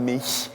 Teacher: “mich” is something between “kh” and “sh” more to the front and higher in the mouth